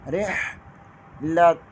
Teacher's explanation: را زیر کو ہا کے ساتھ ملائیں گے، را کو بریک پڑھیں گے اور ہا ادا کریں گے، ہا نہیں پڑھیں گے۔